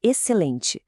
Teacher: E o N, no final ele cria aquele som nazalado, sabe? Que a gente representa como em. · O XC, por exemplo, vira um som só, um som de S. E o N, no final ele cria aquele som nazalado, sabe?